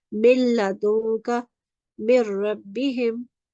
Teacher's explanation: merge the first letter with the lam mushaddad or ra mushaddad and leaving the nun sound out